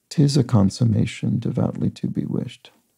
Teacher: the last syllable of consummation and the first syllable of devoutly are both unstressed